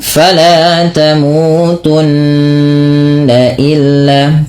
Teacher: cara membacanya itu menahan suara bunyi n ya sepanjang dua harakat. Maka fala tamutun illa tidak hanya cukup fala tamutunna illa tapi ditahan dengan menahan bunyi nnya sepanjang dua harakat. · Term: ghunah, bacaan gunnah